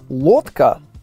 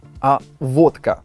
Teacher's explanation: это когда звук л заменяют на звук в